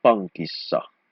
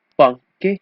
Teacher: there's a double K here. It becomes a single K.